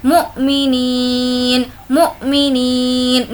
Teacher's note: मु, अब यहाँ पर झटका देंगे क्योंकि हमज़ा साकिन के पढ़ने में झटका है